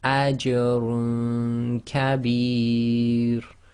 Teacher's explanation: Apply ikhfaa, i.e. hiding the sound of the noon sakin in the dhammatain and trying to get ready for the next articulation point, or at least keeping your tongue away from the noon, the roof of your mouth.